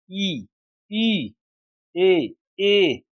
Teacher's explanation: इनका उच्चारण जीभ के अगले भाग से होता है। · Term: अग्र स्वर